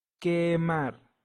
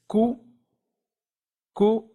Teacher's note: Q as in kite, but without the puff of air